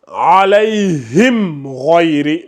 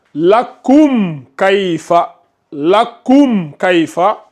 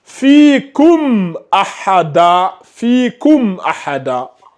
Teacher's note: Pour le izhar, il n'y a jamais de nasillement. Le nasillement n'existe que quand nous sommes au niveau du idgham ou au niveau du ikhfa.